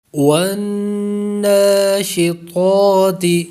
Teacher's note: طا پر حروف مستعلیہ ہے اس لیے پر کریں گے